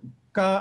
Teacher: Ka, I should have said, without aspiration.